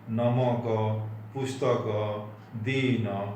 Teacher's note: उड़िया में इसको अगर पढ़ेंगे तो अ का उच्चारण में ज़्यादा समय लगेगा।